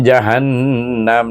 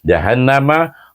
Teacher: Kalau tak dua harakat tak jadi dia punya dengung itu di panggil wajibul ghunah tu dibaca dengan dengung dua harakat